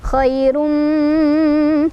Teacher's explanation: Jadi cara bacanya idgham dimasukkan bi gunnah dengan dengungan. Jadi kita masuk sambil berdengung ya. Khairum, langsung fokus ke huruf mim yang kedua. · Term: idgham bi gunnah